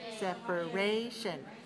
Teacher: syllables where's the stress separation third syllable so four dash three four syllables stress the third syllable